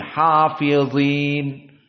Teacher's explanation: hafidin dan dia dalam keadaan tafkhim